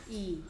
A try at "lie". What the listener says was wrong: e가 아니고요. 끝에 있는 e는 소리 나지 않고요. i는 I, E, O 중에서 I. 그래서 소리가 뭐다? 가 된 거예요.